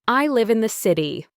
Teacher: My voice goes down on the last stressed word, city. City. This falling tone signals that I am finished with my thought.